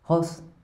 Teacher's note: making the sound deep in his throat as though hawking with a bad cold